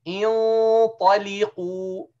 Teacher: Not only from the front, you prepare the whole makhraj, the whole organs of speech, you prepare them to do the ta. So the ta is heavy, means you're going to curve your tongue from the middle.